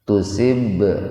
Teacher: Ba sukun di tengah-tengah kata. Jadi membacanya dipantulkan secara ringan. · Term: qalqalah sugro